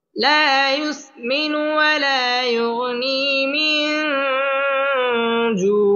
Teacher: জিম ইকফার হরফ মিন জু জু পেশের বাম পাশে জজম ওয়ালা ওয়াও মদের হরফের বামের হরফে ওয়াকফ আসার কারণে মদ্দে আরজি এখানে 3 আলিফ টেনে পড়তে হবে